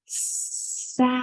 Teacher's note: has a schwa sound almost to the end, right before the D